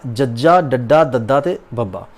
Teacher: ਇਹ ਸਾਡੇ ਕੋਲ ਜਿਹੜੇ ਹੈਗੇ ਨੇ ਨਾ ਜੀ, ਇਹ ਸਗੋਸ਼ ਨੇ, ਨਾਦੀ ਨੇ ਅਤੇ ਇਹ ਉਹ ਵਿਅੰਜਨ ਨੇ ਜਿਨ੍ਹਾਂ ਦੇ ਉਚਾਰਨ ਦੇ ਵੇਲੇ ਸੁਰ ਤੰਦਾਂ ਦੀ ਜਿਹੜੀ ਵਿਚਲੀ ਜਿਹੜੀ ਵਿੱਥ ਹੁੰਦੀ ਹੈ, ਜੋ ਗੈਪ ਹੁੰਦਾ ਹੈ, ਉਹ ਜ਼ਿਆਦਾ ਨਹੀਂ ਹੁੰਦਾ, ਘੱਟ ਹੁੰਦਾ ਹੈ ਅਤੇ ਸੁਰ ਤੰਦਾਂ ਦੇ ਵਿੱਚ ਜਿਹੜੀ ਹੈਗੀ ਵਾਈਬ੍ਰੇਸ਼ਨ, ਇੱਕ ਕੰਬਣੀ ਪੈਦਾ ਹੁੰਦੀ ਹੈ।